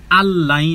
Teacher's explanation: নুন সাকিনে পরে লাম, ইদগামে বেলা গুন্নাহ ব্যতীত মিলিয়ে পড়তে হবে